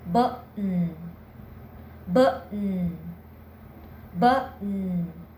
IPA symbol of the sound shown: ʔ